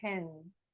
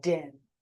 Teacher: one of them is unvoiced no movement in the voice box and the other one is voiced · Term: twins